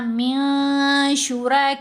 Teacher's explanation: جب یہ نون ساکن یا تنوین کے بعد آئیں تو ان پر اخفاء ہوگا. اور اخفاء کرتے ہوئے نون کی آواز کو ناک میں چھپایا جائے گا.